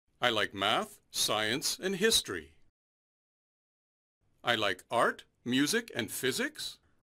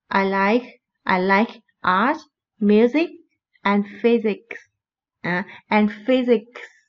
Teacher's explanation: Đó là giọng điệu sẽ đưa đi xuống đối với cái từ ở cuối câu.